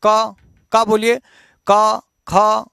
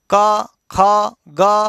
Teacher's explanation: ये सब कंठ से उच्चरित होता है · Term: कंठ वर्ण